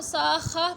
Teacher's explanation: اگر وقف کریں گے تو ساخہ پڑھیں گے، تا کو ہا کی آواز میں تبدیل کر دیں گے